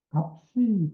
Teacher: 값이 그러면 비읍, 시읍이 둘 다 소리 나는 거죠.